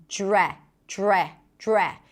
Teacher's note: Now, to pronounce this phrasal verb, you start with a dr and then when you connect the dr, you hear a j sound.